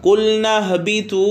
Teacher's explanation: واو مدہ ہے، ایک الف کے برابر کھینچ کے پڑھیں گے